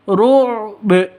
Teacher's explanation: Ru'b ba-nya disukunkan, berlaku hukum qalqalah karena ada di akhir, berarti qalqalah kubara, agak tebal, agak tinggi pantulannya.